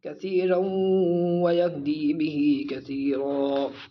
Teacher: اس کے اندر ادغام، اس کو کھینچیں گے را کو واو سے ملاتے ہوئے